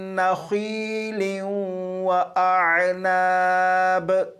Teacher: اور یہاں پر دیکھیں لام کے نیچے دو زیر ہیں یعنی تنوین ہے، تنوین کے بعد واو ہے، تو یہاں پر تنوین کو واو میں ادغام کر کے پڑھیں گے۔ یہ جو لام ہے اسے اس طرح نہیں پڑھیں گے لن لن، بلکہ اسے پڑھیں گے لیوں لیوں۔